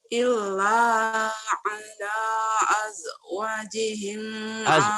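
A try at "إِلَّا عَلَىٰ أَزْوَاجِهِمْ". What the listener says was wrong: Wanya panjang. Illa ala azwa. Wanya panjang. Jangan jim ya. Zai. Azwa. Illa azwa. Ji-nya baru.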